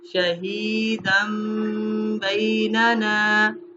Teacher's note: تنوین کو میم سے ملا کے پڑھیں گے. شہیدم بیننا، شہیدن نہیں پڑھا، شہیدم بیننا.